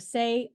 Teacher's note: the tongue starts mid height in front position of the mouth transitioning from more closed to more open it is located in the closed mid front position you pronounce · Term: long a